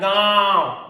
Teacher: में नाक और मुंह दोनों से निकलेगा, याद, गांव, इधर से आवाज आ रहा है नाक से, गांव, और मुंह से भी निकल रहा है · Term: अनुनासिक